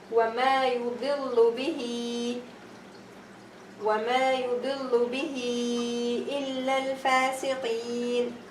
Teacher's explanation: And here I'm going to have Hamza. Again, Hamza is following the ha that has a kasra on it. So it's going to be longer, 4 or 6 or 2. I'm going to have a choice to make it 2 or 4 or 6.